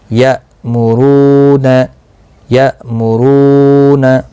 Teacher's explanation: یا حمزہ زبر یا، میم پیش مو، را واو پیش رو، یا مرو، نون زبر نا، یا مرون، یا مرون، حمزہ ساکن کو جھٹکی کے ساتھ پڑھا جائے گا، را پور پڑھا جائے گا، رو واو مدہ بھی ہے، ایک الف کی مقدار کے برابر کھینچ کر پڑھیں گے، نہ کو کھینچنا نہیں۔